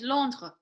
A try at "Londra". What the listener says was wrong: No, not with the R, not with the throaty R. Londra. clean. Londra. Like laundry.